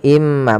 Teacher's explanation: Kemudian pada lafal im mahin, di sini ada bacaan idgham bi gunnah lagi, yaitu adanya tanwin bertemu dengan huruf mim. Maka cara bacanya masukkan ke huruf mim, yaitu imma, bukan lagi inma tapi imma, sambil ditahan gunnahnya 2 harokat.